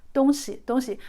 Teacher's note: make sure the sound, the tone is 东 first tone, then 西 neutral tone. If you say 东西 like literally first tone and first tone, it means east and west, alright?